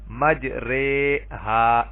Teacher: اس را کی جو کھڑی زیر ہے اس کو ری کی بجائے رے پڑھیں گے. مجریہا، اس کو کہتے ہیں ایمالا.